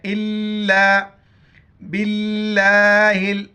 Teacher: با کو لام کے ساتھ ملائیں گے، بیچ میں الف اور لام کو نہیں پڑھیں گے۔